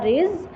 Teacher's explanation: ज़ा की सीटी शार्प आएगी, जेड वाली बजिंग साउंड के साथ